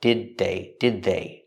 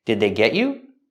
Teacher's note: the D at the end of did is a stop D.